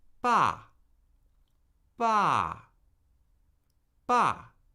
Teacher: But the difference with the fourth tone is as soon as you begin pronouncing a syllable with the fourth tone, the tone starts falling